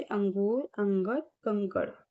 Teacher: यह स्वर के बाद आने वाला व्यंजन है जिसकी ध्वनि नाक से निकलती है। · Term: अनुस्वार